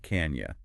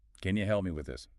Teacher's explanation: The vowel in can might weaken slightly, and you reduces to ya